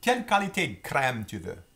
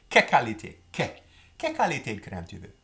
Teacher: we would also very often drop that L sound when it's in front of a consonant. You might just hear, que qualité, que.